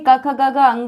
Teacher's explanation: कंठ से क ख ग घ अंगा निकलता है